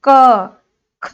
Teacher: हमें स्पर्श कहाँ से हो रहा है? कंठ से स्पर्श हो रहा है, इसलिए हम इन्हें कंठ वर्ण कहते हैं